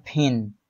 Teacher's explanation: jika berada di awal kata maka dia harus diletupkan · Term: aspirated